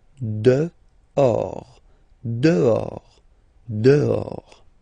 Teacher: this H in French doesn't exist phonetically, so you don't pronounce it